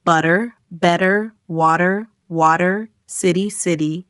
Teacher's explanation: A big part of sounding American is the flap T, where the T in words like better or water sounds more like a soft D. So better becomes better and water sounds like water.